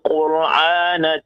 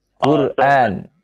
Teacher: Quran, a itu hamzah ya, jangan Quran jangan pakai ain ya.